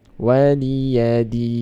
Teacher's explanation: din baca panjang 6 harokat.